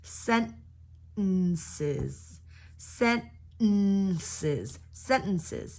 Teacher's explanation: stop the T sound completely and just go sentences